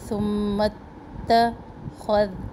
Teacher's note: خو کے ساتھ ذال کو موٹا نہیں پڑھنا اور ذال کے ساتھ خو کو نرم نہیں پڑھنا، تو دونوں کا دھیان رکھیں.